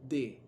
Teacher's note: En cambio, la D es sonora. ¿Por qué? Porque antes de emitir el sonido hay un ruido, D, ¿ve? Hay un sonido.